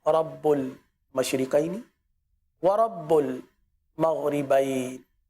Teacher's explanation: याद रखिए इस आयत करीमा में जितने भी रा हैं इन रा को पुर पढ़ेंगे